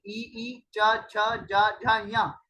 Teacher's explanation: ई च छ ज झ ञ आदि का उच्चारण किससे होता है, आदि का उच्चारण तालव्य से होता है। वे वर्ण जो तालु के स्पर्श से बोले जाते हैं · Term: तालव्य वर्ण